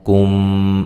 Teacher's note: میم ساکن کا ادغام ہو رہا ہے، ٹھیک ہے، ادغام شفوی